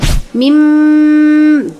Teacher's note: Mim itu disebut dengan iqlab. Iqlab karena nun mati bertemu dengan ba. Nah, di sana ada tanda mim. Jadi berubah menjadi mim bunyinya.